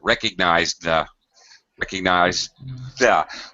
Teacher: My tongue is in the D position and I slide it forward to hit my teeth